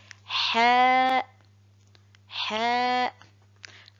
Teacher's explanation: La lettre ha sort du milieu de la gorge.